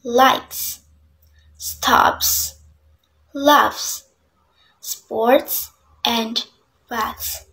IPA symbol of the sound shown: s